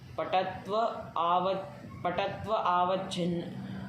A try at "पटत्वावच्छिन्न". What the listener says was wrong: पटत्व अवच्छिन्न तुम बोलने जा रहे हो, संधि करना नहीं आता है तुमको क्या? पटत्वावच्छिन्न